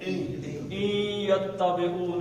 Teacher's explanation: اب نون نے یہ کے اندر گھس جانا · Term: ادغام